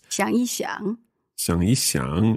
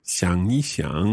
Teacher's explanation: if you put in the yi, then you keep the third tone. You keep the tone.